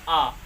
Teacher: जब आ बोलेंगे तो कंठ से ही आवाज़ निकलती है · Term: दीर्घ स्वर